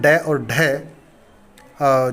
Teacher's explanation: उच्चारण में जीभ पहले ऊपर उठकर मूर्धा को स्पर्श करती है और फिर झटके के साथ नीचे आती है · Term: उत्क्षिप्त व्यंजन